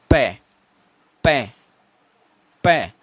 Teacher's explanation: हवा बिल्कुल बंद होगी और जब हॉट खुलेंगे तो वो एकदम से खुलेंगे, सडन हवा रिलीज होगी। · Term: प्लूसिव